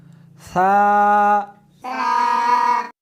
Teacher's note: اس حرف کو زبان کو دونوں دانتوں کے درمیان رکھ کر پڑھیں گے